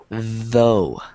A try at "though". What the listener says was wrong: Not dough. But look at the way that my mouth moves. Yeah, so your tongue should be in between your teeth. Though.